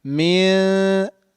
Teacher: Bihijaratim min, not min. We're not pronouncing noon completely, but we are hiding it. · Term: ikhfa